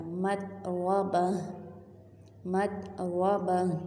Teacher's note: مطربہ، اب تا ہے، گول تا ہے، لیکن حالت وقف یعنی کہ یہاں پہ جیم کا سائن آ گیا، وقف جائز، یہاں پہ ہم نے رکنا ہے تو ہم نے اس تا کو ہاں میں بدل دیا۔